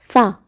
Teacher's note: اس کا مخرج یہ ہے کہ آپ نے اپنی زبان کو آپ کے جو اوپر والے سامنے کے 2 دانت ہوتے ہیں ان کے نیچے ٹچ کرنا ہے